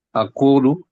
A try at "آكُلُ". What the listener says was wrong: Akulu. Jawab A-nya yang panjang. Matnya di A. Akulu gitu. Jangan kepanjangan juga. Akulu gitu aja.